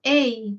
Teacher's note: Luego tenemos el diptongo ei, donde más fuerza de voz tiene la E.